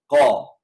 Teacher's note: Qaf keluar dari pangkal lidah.